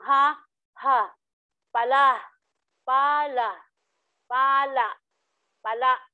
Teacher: Ito naman ang malumi, nasa ikalawang pantig mula sa hulihan ang diin, ngunit ito ay impit.